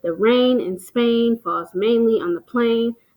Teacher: So you notice that AI sound in most of the words in that line. That would be an example of assonance.